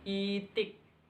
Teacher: Vokal depan tinggi tak bundar